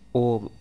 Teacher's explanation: समय ले तो उसे पल स्वर कहते हैं जैसे कि ओम ओम को बोलने में हमें उच्चारण में दीर्घ स्वर से भी अधिक समय लग रहा है तो ये प्लुत स्वर कहलाएगा और इसे त्रि मात्रिक भी कहते